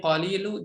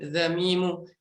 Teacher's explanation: Lamnya di lisan, mimnya ada di syafahah. Ada di bibir.